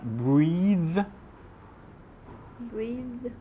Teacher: você coloca um E mais alongadinho, mais próximo do I, e esse T surdo, sem voz, passa a ser um T com voz